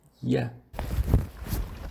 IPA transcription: j